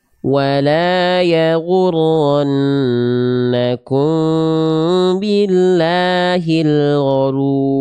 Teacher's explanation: Lam jalalah ya di sini atau lam pada lafaz Allah di sini dibaca harus tipis dengan vokal A ketika didahului huruf berharokat kasroh.